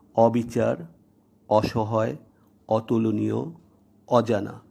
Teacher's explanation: এই নিয়মটির একটি ব্যতিক্রম রয়েছে, সেটি হলো আদ্য অ বা শুরুর অ যদি নাবোধক অর্থ প্রকাশক হয় বা আদ্য অ যদি স-এর সাথে সহিত বা সহ অর্থে বিলীন থাকে, তাহলে বর্ণিত নিয়মের ব্যতিক্রম হয়, অর্থাৎ আদ্য অয়ের উচ্চারণ স্বাভাবিক বা বিবৃত হয়, যেমন অবিচার, অসহায়, অতুলনীয়, অজানা।